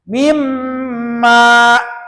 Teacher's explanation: Mimma, jadi tahan dulu m-nya. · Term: gunnah